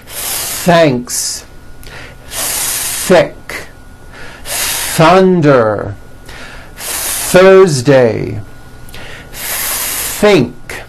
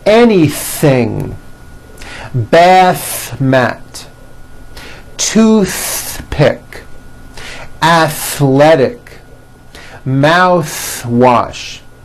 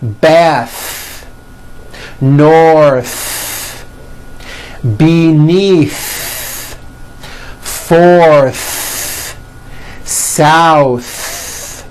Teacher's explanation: the TH sound is a friction sound and is not as loud as other speech sounds. Therefore, American speakers stretch them out a little bit.